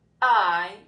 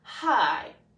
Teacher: we're taking out that glottal stop, which is a word we will talk more about in the future, and replacing it with H